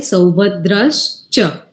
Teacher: ચ તાલવ્ય છે એટલે તાલવ્ય શ લાગશે